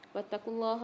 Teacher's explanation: اللہ کے لام کو موٹا پڑھیں گے